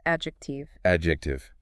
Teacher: the D in that ad part is usually silent